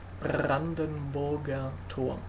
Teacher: So it's r, like it has to vibrate. R, it's really vibrating.